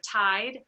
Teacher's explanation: the monophthization of the I vowel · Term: I monophthization